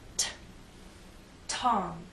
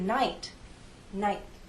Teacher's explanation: air there the tip of my tongue touches that hard bump there is a release of air but the puff is very weak